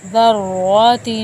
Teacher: تا کے اوپر تنوین کا ایک غنہ ہوگا یا اخفا بھی کہتے ہیں